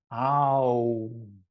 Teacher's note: a diphthong means that it's a way from one sound to the other. It's a path from A to U. Ow. And the mouth is moving.